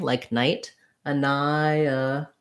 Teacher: says a schwa so it sounds like uh an eye so this will have some secondary stress a little bit of length and a clear vowel on that ni syllable